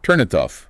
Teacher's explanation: So we stretch the T over to the O. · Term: catenation